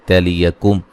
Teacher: मीम साकिन का इज़हार है मिलाने की सूरत में।